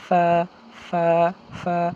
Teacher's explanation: উপরের যে আমাদের দাঁতগুলো আছে সামনের দুইটা দাঁত এই দুইটা দাঁতকে নিচের যে একটা ঠোঁট আছে ঠোঁটের মাঝ বরাবর রেখে হালকা বাতাস বের হয়ে বলবো